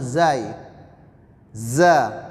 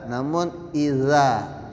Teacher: huruf zal yang mana makharijul hurufnya itu di ujung lidah bertemu dengan gusi atas